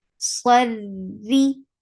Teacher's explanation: Swad swad is heavy. Ra is light because it has kasra. Swadri Ri for kasra give E sound.